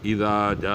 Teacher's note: مد متصل وہ ہے کہ حروف مدے کے بعد، یعنی وہ الف واو یا جس کے ما قبل حرکت اس کے موافق ہو، یعنی الف سے پہلے زبر، واو سے پہلے پیش اور یا ساکن سے پہلے زیر ہو، تو اس کو حروف مدہ بولتے ہیں۔ اور حروف مدہ کے بعد اگر ہمزہ اسی کلمے میں آ جائے تو اس کو مد متصل بولا جاتا ہے، اور اسے چار الف کے برابر کھینچا جاتا ہے، یعنی تقریباً 4 سیکنڈ۔